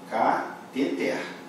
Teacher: A pronúncia certa dela é cateter, ou seja, o mais forte é o último. Eu separo essa sílaba assim, cateter. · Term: oxítona